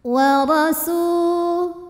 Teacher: ra dibunyikan secara tafkhim sebab ra berbaris fathah, maka dibacanya tebal